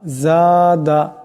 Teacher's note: এখানে জাকে এক আলিফ লম্বা করিয়া পড়তে হবে।